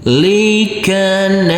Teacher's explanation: huruf Jim yang bersukun ini harus kita pantulkan karena huruf Jim adalah bacaan Qalqalah wajib kita pantulkan